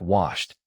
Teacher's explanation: Wash ends with SH, which is voiceless.